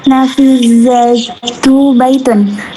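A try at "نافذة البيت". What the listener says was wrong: Nafizatul bait. Dibaca kasrah ya baitnya. Baiti. Sama kayak contohnya ini masjidi kan bacanya ya.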